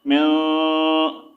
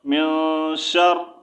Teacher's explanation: نون ساکن کے بعد حروف اخفا ہے، تو یہاں پر ہم کیا کر رہے ہیں، غنہ کر رہے ہیں